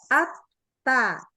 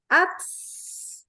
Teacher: spesialnya dari huruf ta adalah dia hams tetapi syiddah. Makanya dia kalau pas sedang sukun nggak boleh dibaca ats.